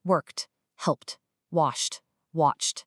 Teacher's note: It's this really clean, sharp finish with no vocal vibration at all. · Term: crisp t sound